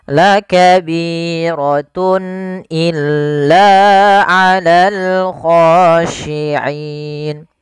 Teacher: Kemudian pada lafal tun illa, di sini ada izhar halqi, yaitu suara tanwinnya harus dibaca dengan jelas karena ketemu dengan huruf hamzah.